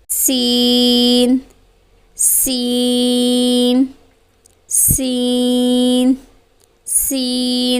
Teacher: سین باریک پڑھا جانے والا حروف ہے، مرقق ہے، حروف مستفیلہ میں سے ہے۔